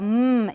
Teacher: the velum is down it's open so the air is going out through the noise that's the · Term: bilabial nasal stop